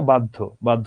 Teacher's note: দেখো অটো একটা দ চলে আসছে মাঝখানে। তাই এখানে কিন্তু ধটা দুইবার হবে না।